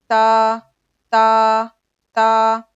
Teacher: जुबान की नोक को सामने के दो दांतों के जड़ में लगाने से ता अदा होता है।